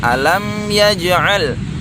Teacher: mim mati berjumpa dengan huruf ya tidak boleh didiamkan harus jelas